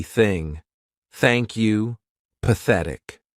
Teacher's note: the unvoiced TH sound, which means our vocal cords are not going to vibrate